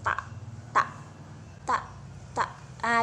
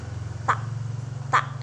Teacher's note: terjadi pertemuan antara ujung lidah dan Gigi · ketika kita mengucapkan huruf ta, pita suara kita itu tidak bergetar. Kan tadi ma dan la itu bergetar, sedangkan huruf ta itu tidak. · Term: lamina dental, bunyi tidak bersuara